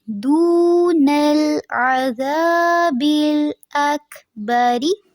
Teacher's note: را کے نیچے زیر ہے تو اس کو پر نہیں کریں گے